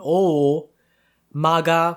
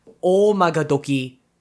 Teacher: it begins with o so it's a long o so imagine you go over a speed bump in the middle of the o sound